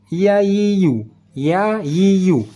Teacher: makhraj hurufnya di tengah-tengah lidah tengah-tengah lidah bertemu dengan langit langit